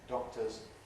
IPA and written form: ˈdɒktəz (doctors)